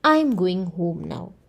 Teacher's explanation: the statement starts off in a high tone and it goes down. The tone, the pitch goes down. It is usually used in wh questions and general statements. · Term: falling intonation